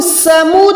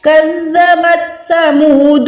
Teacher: اچھا اس کو ہم سمود نہیں پڑھ سکتے کیونکہ یہ سین نہیں, یہ سا ہے. سین وسل ساؤنڈ پہ دیتی ہے لیکن سا جو ہے بالکل نرم حروف ہے